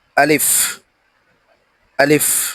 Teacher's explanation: আলিফে কোন টান হবে না। একবারে দ্রুত উচ্চারণ করতে হবে।